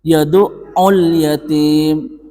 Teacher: lamnya itu tetap dibaca sukun, dan cara membacanya itu idhar, harus jelas. Yad'ul yatim, harus jelas makharijul hurufnya.